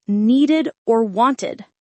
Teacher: So t after voiceless sounds like helped, duh after voiced sounds like cleaned, and id after t or duh like needed or wanted